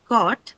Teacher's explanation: The last one is cot, which has the long vowel O.